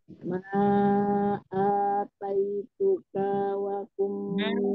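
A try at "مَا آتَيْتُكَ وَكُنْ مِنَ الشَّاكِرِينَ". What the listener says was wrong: Misalnya jangan panjang. Ma'ataituka wa kum langsung ke waw.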